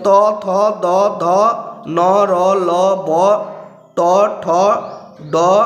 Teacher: যেসব ধ্বনি উচ্চারণ করতে জিহ্বার শিখর অংশের সাহায্য লাগে তাদের জিহ্বা শিখরীয় ধ্বনি বলা হয়